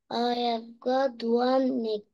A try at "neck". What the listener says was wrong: قولي neck مش نك.